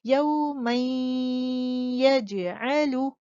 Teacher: most complete غنہ یعنی آپ سب سے زیادہ دیر تک غنے کی آواز کو خیشوم میں ہولڈ کر کے پڑھیں گے